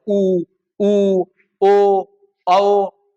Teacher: वो बोलते समय मुंह गोल होगा। ओठ गोल होंगे तो ओठ के गोल होने के आधार पे। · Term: वृत्त मुखी